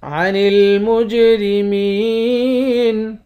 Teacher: جیم پر قلقلہ کریں گے